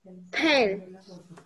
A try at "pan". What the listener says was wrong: Pan. Tiene que salir la A al final.